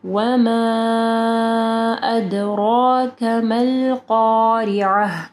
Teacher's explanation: وما ادراک ملقارعہ، وما کے اوپر مد ہے ٹھیک ہے، اس کے بعد حمزہ ہے، 4 سے 5 حرکات کے برابر اس کو لمبا کرنا ہے. دال کے اوپر دیکھیں جزم ہے ٹھیک ہے، تو یہاں پہ ہم لوگ قلقلہ کریں گے